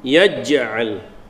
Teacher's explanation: jim salah satu berada huruf qalqalah, jadi qalqalah sughra sebab berada di tengah tengah kalimah